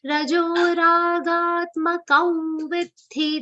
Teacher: The Anuswar on Ka will be pronounced like a nasal V consonant. Ga is a long sound, and it's followed by half the and a complete M sound.